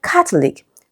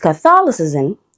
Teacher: Okay, now the word Catholic, right, we have the k and the ah sound, so it is stressed on the first syllable. But with Catholicism, the letter A changes to the schwa sound, and that's why the stress shifts to the second syllable